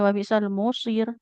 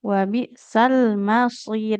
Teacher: Huruf mimnya nggak boleh tebal ya.